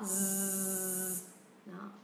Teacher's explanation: các bạn để ý cái ending sound nó là âm z nha, âm z, âm hữu thanh. Hữu thanh tức là khi mình sờ dây hiệu quản của mình các bạn sẽ thấy nó rung.